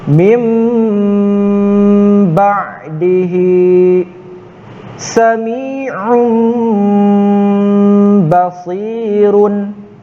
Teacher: Cara membaca iqlab dibaca dengung yang lama mendekati huruf ba. · Kakak tambahkan, ketika membaca dengung mendekati ke huruf ba, mulutnya dirapatkan seperti mendekati ke huruf ba itu sendiri.